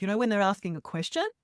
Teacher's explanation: not having that upward uh inflection that sadly a lot of young women Australian women have